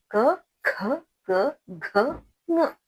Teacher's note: स्पर्श व्यंजन कंठ वाले व्यंजन जो है कंठ से निकलकर जो है ध्वनि निकलती है, वहां कंठ से निकल कर आती है, यानी क वर्ग क, ख, ग, घ, ng।